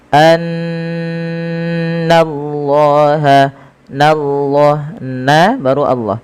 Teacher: Setiap kita mendapati adanya nun berharakat tasydid, kita tahan dulu suara bunyinya sepanjang 2 harakat karena ia kita namakan dengan bacaan gunnah. Kemudian lafal Allah bila didahului dengan fathah maka dia ditebalkan, tapi nanya tetap tipis.